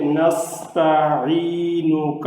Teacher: عین کو لمبا کر کے پڑھنا ہے، سین پر سیٹی کی آواز ہے